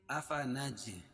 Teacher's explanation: جیم پر قلقلہ، کیونکہ جیم حروف قلقلہ میں سے